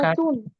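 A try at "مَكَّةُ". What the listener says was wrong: তু না, এক পেশ মাক্কা তু। মাক্কা।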